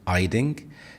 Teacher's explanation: So the h is dropped. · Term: H dropping